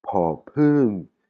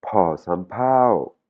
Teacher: c'est un P avec de l'air après mon P